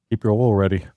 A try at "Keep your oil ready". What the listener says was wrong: No, you didn't say oil. You said OL. You said OL. You said "oh."